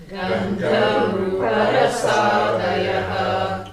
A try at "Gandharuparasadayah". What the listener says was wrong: I'll tell you how you are saying it, or how at least I'm hearing it. Gandharuparasadayah. That is throwing off the meter. Gandharuparasadayah.